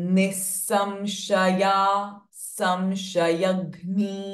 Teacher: And the anuswara, the makara sound remains as a m. Because it is getting followed by sh sound, both the ways.